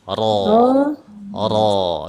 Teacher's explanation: Huruf ro itu enggak perlu di kurang-kurangi getarannya ya. Biarkan aja dia.